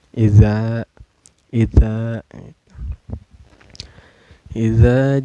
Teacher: cara bacanya dipanjangkan dua harakat ya atau diayun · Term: Mad Thobi'i